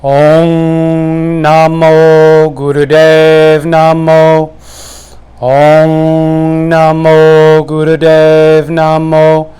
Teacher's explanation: So, what I just do is I do a kind of monotone and repetitive, but once again accentuating that sound ong. Again, resonating that ng.